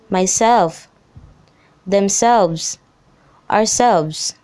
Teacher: The second syllable usually takes the stress. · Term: Reflexive pronouns